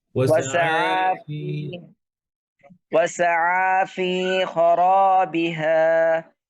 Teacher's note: ফি এর মাদ মিস হয়ে গেছে, জেরের পরে ইয়া আছে, জেরের পরে ইয়া মাদ।